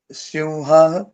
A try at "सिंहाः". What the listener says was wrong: नहीं, सिंह, हाँ खींचिए।